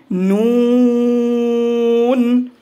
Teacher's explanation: জিহ্বার আগা তার বরাবর উপরের তালুর সঙ্গে লাগিয়ে উচ্চারিত হয়